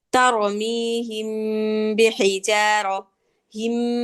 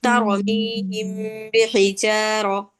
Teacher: তারমিহিম বিহিজারা, হিম, এভাবে কিন্তু আমি গুণনা করি নাই, আমি পাতলা করে গুণনা করছি। যদি কারো একটু সম্ভব হয় দুই ঠোঁটটা একটু ফাঁকা করে নিবেন।